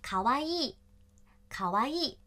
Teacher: 字是可爱，最后跟着一个意，表示形容词的标志， 读成卡哇伊。三调，低高高低